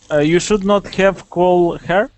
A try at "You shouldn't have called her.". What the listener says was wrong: Now, but pronounce that contraction for me. So instead of saying should not, say shouldn't. You shouldn't have called her.